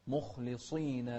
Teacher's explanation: وضح الخاء مع تفخيمها